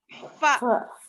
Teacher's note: होंठ गीला हिस्सा सामने के दो दांतों को लग रहा